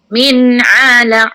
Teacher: ingat sebutan ain tu di pertengahan halkum